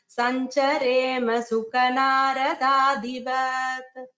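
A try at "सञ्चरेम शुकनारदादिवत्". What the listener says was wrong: This is not su, it is shu, shuka.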